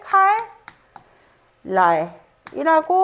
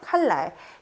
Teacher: 첫 음절의 종성 자리 리을이 그다음에 오는 말에 초성자 니은 영향을 미치면서 발음할 때 칼 랄이라고 발음하게 하는 것이죠